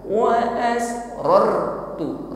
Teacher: ra sukun di sini kita ucapkan dengan takrir, tetap bergetar. Ada getarannya, namun getarannya tebal, tidak sekedar bergetar. Wa asrartu, tetapi ror getarannya tebal.